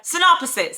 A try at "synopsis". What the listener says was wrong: see see how you're adding that extra o in there